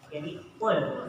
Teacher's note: Suka banyak yang mengatakan kule. Jadi dikolkolakan. Padahal itu bukan huruf kolkolah. Jadi kul. Jangan sekali-kali membaca kule ya.